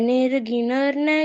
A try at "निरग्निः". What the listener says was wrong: निर्गिन नहीं है। ये जो छोटी की मात्रा है ये नी पर जाती है, नी पर। निराग्नि।